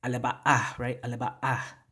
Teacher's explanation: And we get in Yakan, remember, there's that glottal stop right there with the apostrophe, right? So we have to stop the flow of air if we're going to use it as a consonant for that glottal stop